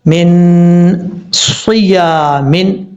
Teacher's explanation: یہاں پر صاد حروف مستعلیہ میں سے پر پڑھا جائے گا، نون ساکن کے بعد صاد آ رہا ہے، یہاں پہ نون ساکن کا اخفا ہوگا، ایک الف کی مقدار غنہ کیا جائے گا، اور صاد حروف مستعلیہ میں سے پر پڑھا جائے گا۔